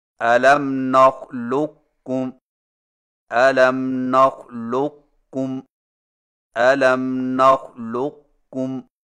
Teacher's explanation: قاف کو موٹا اور بغیر جھٹکا کے کاف میں داخل کر کے اس طرح پڑھیں کہ قاف کے موٹا پن کو ظاہر کرنے کے فوراً بعد کاف باریک ادا کریں، یعنی اس طرح الم نخلقکم الم نخلقکم الم نخلقکم، اس کو ادغام ناقص کہتے ہیں۔